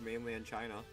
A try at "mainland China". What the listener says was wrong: Still keeps sounding like you keep saying mainly in China, not mainland. Yeah, he says mainly. He really does.